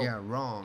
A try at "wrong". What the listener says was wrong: It is, we have this V, this W, we are having it, but it is not that hard, it is not that stiff, you know? So it sounds more like wrong.